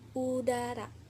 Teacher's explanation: huruf vokal U, vokal bundar tertutup, vokal belakang tinggi dan atas bibir tertutup membentuk bundar, yang terjadi apabila lidah diangkat setinggi mungkin mendekati langit-langit.